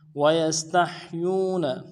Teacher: یا کو سین کے ساتھ ملانا ہے، سین سیٹی والا حرف ہے، سیٹی ادا ہوگی۔ تا کو نرم سے ادا کریں گے، تا کو ہا کے ساتھ ملانا ہے، ہا کو گہرائی سے پڑھیں گے، اور یا کو واو کے ساتھ ملانا ہے، واو مدہ ایک الف دال میں کھینچیں گے۔